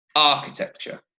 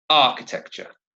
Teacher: Architecture, 4 syllables, and the stress is on the first syllable